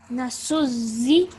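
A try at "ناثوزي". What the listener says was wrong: Try to make this a th sound. If you put your tongue up to your top teeth, like you would say the or that. Yes, a slight th sound.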